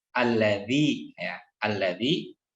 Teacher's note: ujung lidahnya menyentuhkan kepada ujung gigi seri atas, tetapi pangkal lidahnya tidak naik ya, tidak bergeming ya. Jadi biasa aja ya, cenderung menurun ya, karena istifal ya, atau terbuka infitah. · Alladzi tidak boleh alladzi ya, tidak boleh alladzi ya. Kemudian diucapkannya dengan tidak menyertakan desisan karena bukan hamas ya. Wo dan zal ini masuknya kepada jahar sehingga cukup alladzi ya, alladzi. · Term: dzal